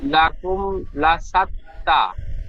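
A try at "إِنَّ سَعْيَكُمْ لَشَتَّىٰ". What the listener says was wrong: লাকুম লাশাত্তা হয়ে যাচ্ছে, ইয়াকুম, ইয়া সাবার ইয়া হবে, ইয়াটি লাম। হ্যাঁ, লামের মতো উচ্চারণ হয়ে যাচ্ছে। ইন্না সায়াকুম লাশাত্তা।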